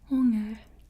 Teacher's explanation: you kind of roll the R just a little bit